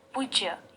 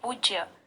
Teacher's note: प के ऊ में आप जोर डालेंगे और कहेंगे पूज्य, और पूज्य में बड़े ऊ का प्रयोग होता है, यानी दीर्घ ऊ का प्रयोग होता है।